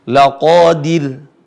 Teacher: ro sukun sebelumnya berharakat kasrah maka dibaca tipis